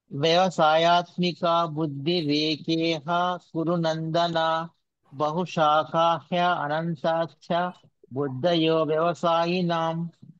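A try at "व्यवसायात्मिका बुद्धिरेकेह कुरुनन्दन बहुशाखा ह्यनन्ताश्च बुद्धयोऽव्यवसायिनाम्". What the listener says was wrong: Good Prabhuji.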